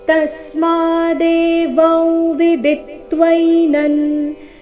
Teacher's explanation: ತಸ್ಮಾದೇವಂ ವಿದಿತ್ವೈನಂ ತಸ್ಮಾದೇವಂ ತಸ್ಮಾ ತ ಮೇಲೆ ಆಘಾತ ಮಾ ದೀರ್ಘ. ಶಬ್ದದ ಕೊನೆಗೆ ಅನುಸ್ವಾರ ಬಂದಿದೆ, ಉಚ್ಚಾರಣೆ ನಾಸಿಕಾ ವ